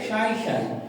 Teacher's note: চন্দ্রবিন্দু থাকলে কি হয় উচ্চারণে একটু নাসিক ধ্বনি উচ্চারণ হয় নাকে নাকে